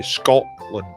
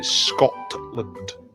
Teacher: You didn't actually say the letter T in the middle of words. You say Scotland. · I suffer from the glottal stop, which is a Scottish thing, of course.